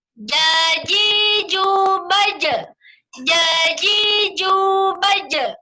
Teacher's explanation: jim ini keluar dari tengah lidah ke langit-langit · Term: makhraj jim